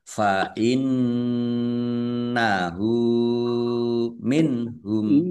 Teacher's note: Nun tasdid dibaca gunah atau mendengung ya ditahan kira-kira dua harakat. Domir ha domah terbalik ini mad silah qosirah.